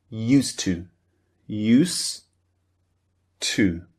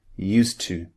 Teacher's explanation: we delete, we omit the du, the d sound at the end of used. So it just sounds like used to use to.